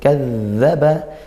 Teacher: zalnya dari ujung lidah ke gigi, kadzaba dialirkan suaranya ya